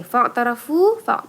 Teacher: fu itu mad tabi'i karena dhammah bertemu dengan waw sukun ya. Bacanya 2 harokat.